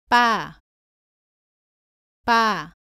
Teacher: 발음은 바와 비슷한데 목에 힘을 주고 더 세게 발음합니다. 공기가 입 밖으로 나오지 않도록 합니다. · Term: 쌍비읍